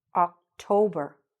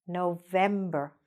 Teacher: So you see in these longer months that the stress is kind of in the middle.